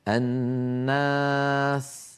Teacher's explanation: الألف بعد النون مرققة لأن النون مرققة